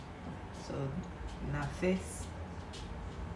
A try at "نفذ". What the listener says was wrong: It's a Z, not S.